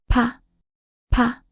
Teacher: 피읍, 피읍, 프, 프. Similar to p and pot, but strongly aspirated. Stronger than pu. Built from pu with an extra stroke for more breath.